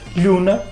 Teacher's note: O N, que existia entre 2 vogais, como na palavra luna, não é? Em mirandês conservou-se. E nós dizemos hoje luna, enquanto que em português caiu e deu lua.